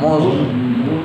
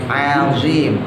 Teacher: Nah, zo itu mencucu sama kayak sod ya.